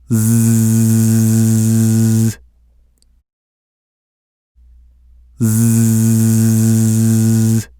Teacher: The way to produce the Z is the same as the way to produce the S, but there is one difference. The Z is a voiced consonant, which means your vocal cords vibrate. Let's talk about how to produce the Z sound in detail. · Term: consonant sound Z